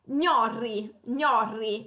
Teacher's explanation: c'è il suono della nasale palatale, gn, e poi alla doppia R, quindi potrebbe essere difficile da pronunciare.